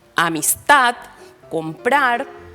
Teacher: suenan fuerte en la última sílaba pero no está señalada gráficamente Entonces es un acento fonético o prosódico la posición del acento